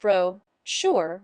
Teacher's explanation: with the emphasis on the first syllable